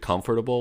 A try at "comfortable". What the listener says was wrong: I'm not sure I like how you say that word. Comfortable. I feel like you're saying way too many letters. Comfortable. Comfortable. Comfortable. I say comfortable. Comfortable. I feel like you're saying every letter. You don't have to say every letter.